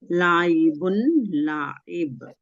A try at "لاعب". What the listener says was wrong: لائبن نہیں لاعبن. لام کی حرکت لمبی نہیں کرنی ہے.